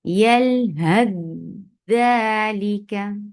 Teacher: यलहद ज़ालिका, इदगाम कामिल में क्या किया जाता है कि पहला हर्फ मुकम्मल तौर पर ड्रॉप हो जाता है और कामिल इदगाम कर दिया जाता है अगले आने वाले हर्फ के बीच में